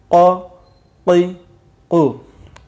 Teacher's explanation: جہاں سے گلا شروع ہونے والا ہوتا ہے اس سے یہ قاف ادا ہوگا۔ قاف زبر قا، قاف زیر قی، قاف پیش قو، قا قی قو۔